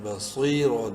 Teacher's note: صاد کو خوب منہ بھر کے پڑھنا ہے. بصیر، دو پیش رن، اور صاد کو منہ بھر کے پڑھتے ہوئے ایک الف کے برابر لمبا بھی کرنا ہے یا مدہ کی وجہ سے.